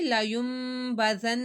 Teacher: با کو میم سے بدل کر گنہ کیا ہم نے